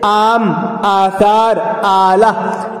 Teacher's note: مد ایک علامت ہے، اس کا معنی ہے لمبا کرنا۔ جس الف پر مد ہو اس سے دگنی آواز نکلتی ہے، یعنی وہ لمبا کر کے پڑھا جاتا ہے۔ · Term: الف ممدودہ